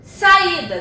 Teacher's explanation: O I. O meu I é a minha sílaba tônica.